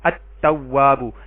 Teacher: یہ جو تا ہے یہ حروف شمسی میں سے ہے تو ال کا لام نہیں پڑھا گیا